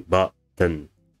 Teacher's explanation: you might pronounce button with the weak central vowel